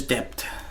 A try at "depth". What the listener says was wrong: it sound like you're saying dep which is the brand that brand of saying dep with just the T at the end